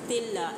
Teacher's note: तिल्ला इसमें जलाला है, लाम को हमने बरीक अदा करना है क्योंकि यहाँ पे ता के नीचे ज़ेर आ रही है। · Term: लाम को बारीक